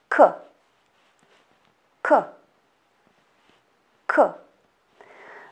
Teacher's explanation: This sound and this letter are similar to English variant K and its sound K. Pay attention, this sound is voiceless. It means that your vocal cords don't work. · The back part of our tongue lifts and presses against the soft palate at the back of the mouth. Because of the air which is going out back of the tongue comes off the palate and sound is produced.